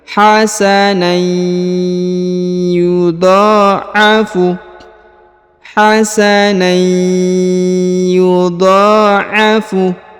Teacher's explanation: huruf na berharokat tanwin bertemu dengan ya, maka ini ditahan dan ditekan lalu melebur ke huruf ya, menghilang ya, huruf tanwinnya menghilang.